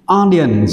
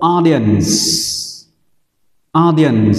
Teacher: audience, trọng âm rơi vào âm thứ nhất